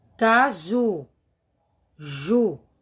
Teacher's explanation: Sílaba tônica é a última, o ju.